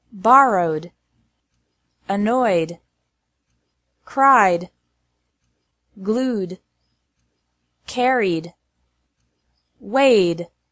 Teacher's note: pronounced like D after verbs ending in a vowel sound